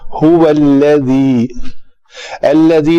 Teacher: هو الذی لام پتلا پڑا جائے گا